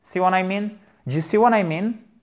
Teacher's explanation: Et on remonte. Pourquoi? Parce que c'est yes, no questions, ok?